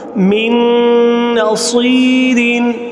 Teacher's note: اور ادغام مع الغنہ کے آخری جو حرف ہے نون، من نصیر۔ اب نون ساکن کے بعد حروف یرملون میں سے نون آ رہا ہے تو یہاں ہم من نصیر ادغام مع الغنہ کریں گے